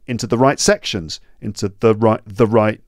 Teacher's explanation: the becomes small because it's not one of the stressed words or one of the stressed syllables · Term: weak forms